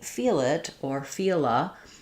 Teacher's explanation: that L goes back to being a light L because it, again, connects and links to the next vowel.